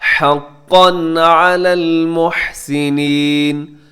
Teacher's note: حقاً میں قاف کے اوپر تنوین ہے اور آپ یہاں پہ کیا کریں گے؟ اظہار کر دیں گے